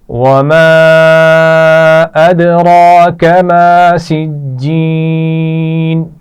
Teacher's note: وما الف مدہ ہے اور اس پر چھوٹی مد بھی ہے تو کھینچ کر پڑھیں گے